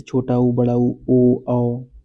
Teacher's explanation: ऐसे स्वर होते हैं जिनके उच्चारण में होठों का आकार गोल हो जाता है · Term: वृत्ताकार